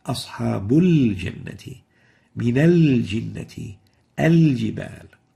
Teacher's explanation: There is no idgham, no merging for the lam, and the lam should always be existed in those cases. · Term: lunar lam